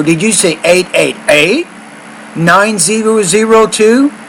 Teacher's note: that 8 needs to be higher with your tone